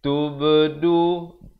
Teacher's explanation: Tubdu ba qalqalah di sini.